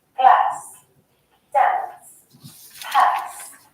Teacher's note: generally in Britain, you'll hear words like glass, dance, pass, with a shorter A sound